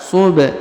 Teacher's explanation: perhatikan huruf ba dipantulkan